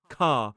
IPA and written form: kɑː (car)